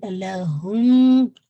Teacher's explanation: آپ نے nasal cavity میں آواز دے جانی ہے 2 کاؤنٹ کے لیے · میم ساکن کے بعد میم ہے تو ادغام میم شفوی، ٹھیک ہے، یہ میم ساکن کے رول ہے، تو آپ نے اس کو ہولڈ کرنا ہے، لہم، ٹھیک ہے۔